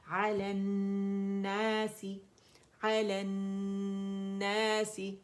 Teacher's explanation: اب لام جو ہے وہ پڑھا نہیں جا رہا اور یہ نون مشدد کی شکل میں پڑھا جا رہا ہے · 2 ساکن اکٹھے ہو گئے اور یہ مد لیٹر جو ہے یہ ڈراپ ہو جائے گا، پڑھا نہیں جائے گا